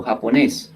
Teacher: Y además de eso se suma, pues que el esfuerzo lo hicimos sobre la última sílaba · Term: aguda